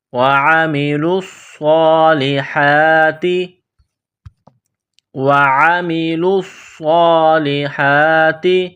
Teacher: لام کو صاد کے ساتھ پلس کرنا ہے، صاد میں سیٹی کی آواز پیدا کرنی ہے، صاد کو موڑا کرنا ہے۔